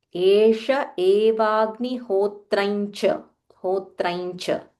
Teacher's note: So we use the Anunasika, which is the fifth letter, to join so that it flows easily.